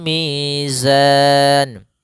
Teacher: pada lafal mi ada mad thabi'i yaitu panjang dua harakat